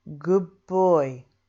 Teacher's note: of the second word that's another word beginning with ba so what we do is change the d of good to a buh that then moves easily into the of boy good boy let's